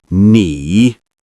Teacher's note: That's the second tone, so it rises slightly.